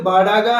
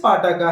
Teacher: उसमें वॉइस्ड बाडा का है, वॉइसलेस पाटा का है